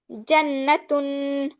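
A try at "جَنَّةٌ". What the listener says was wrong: যেখানে গুন্না সেটা গুন্না করো, জান্নাতুন, জান্নাতুন। গুন্নাগুলো একটু দীর্ঘ করে করো, সমস্যা নেই। প্রথমে একটু গুন্নাটা দীর্ঘ করে করতে হয়, না হলে ভুলে যেতে হয়, বুঝছো? পরে তোমার যখন মানে ভালো হয়ে যাবে তখন তুমি কম করে করতে পারো।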